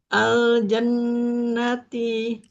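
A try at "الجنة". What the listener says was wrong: jannati. Ya, ja-nya jangan buru-buru fathahnya. Al-jannati.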